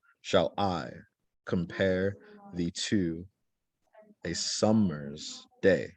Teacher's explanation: so shall is unstressed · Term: iam